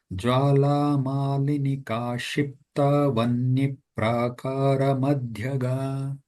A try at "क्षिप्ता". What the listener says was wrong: Mahoday, it is Jwalamalinika Kshipta. So Kshi is the Ka sound should also be heard. Kshipta.